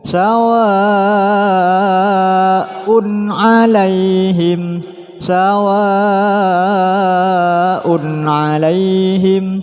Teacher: ada tanwin bertemu ain, hukumnya izhar, dibaca jelas, tidak boleh dibaca dengung.